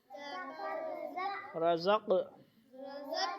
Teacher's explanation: قاف پہ قلقلہ کریں گے، دو آوازیں ڈبل آئیں گی